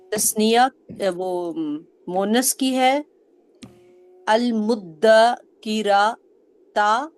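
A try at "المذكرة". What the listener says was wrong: اب آپ نے بھی راہ کو لمبا کیا ہے. المدکی روتا. تیزی سے نکلنا ہے. روتا. را نہیں بنانا اس کو.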